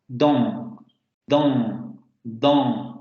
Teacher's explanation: Y en algunas regiones se pronuncia de esa manera, dan, dan, dan. Pero en la variante estándar la vocal tiene que ser nasal. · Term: vocal nasal